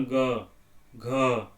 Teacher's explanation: देखो किस तरह का झंकार गला में, देखना, ग, घ, अंग, तो ये हो गया ये झंकार।